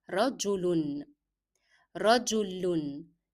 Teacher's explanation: in the pronunciation of tanween with dhamma, you make the sound of lam and then connect it to un, the sound of double dhamma.